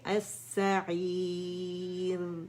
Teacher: را کے ہم مخرج پہ جائیں گے، باریکی سے ادا کریں گے. اس میں تقریر بھی ہے، لیکن تقریر کی جو مقدار ہے مطلب اتنی زیادہ نہیں جیسے ہم فتح کے ساتھ کرتے ہیں تو اس میں زیادہ سنائی دیتی ہے.